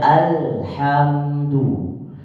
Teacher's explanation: Jadi ditulis alhamdu. Jadi kita membaca alif lam, al-nya jelas, tidak ada, nggak masuk ke dalam huruf di depannya. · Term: idhar qamari